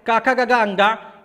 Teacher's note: ये का वर्ग आपका कंठ से बोला जाता है